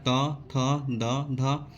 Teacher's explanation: अपने जीवा हमारा दांत पे आ जाता है। दोनों का मिलाप होने से हम उसको बोल पाते हैं। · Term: त वर्ग